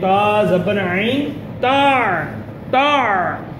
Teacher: تو عین کی آواز حلق سے نکالیں